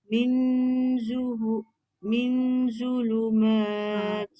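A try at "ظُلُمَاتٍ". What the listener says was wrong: Tu macam ada bunyi sofir sikit.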